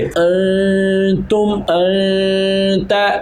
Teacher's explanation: ہم نون کی آواز کو ناک میں لے جا کر ٹھہرا رہے ہیں ایک الف کی مقدار کے برابر، یعنی کہ ہم نون کی آواز کو چھپا رہے ہیں۔ اب یہاں پر ہم نون کو واضح نہیں کر رہے، ہم یہاں پر کر رہے ہیں غنہ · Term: اخفاء